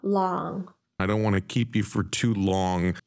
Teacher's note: the O in long is produced as a with an open relaxed lip position rather than the spelling of O so instead of it long